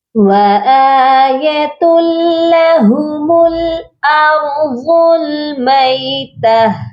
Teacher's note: تو یہاں پر ہم نے ادغام کرنا ہے، وہ بھی بغیر غننے کے، یعنی یہاں پر ہم ملائیں گے، تا کو ہم لام کے ساتھ ملا کر پڑھیں گے لیکن غنہ نہیں کریں گے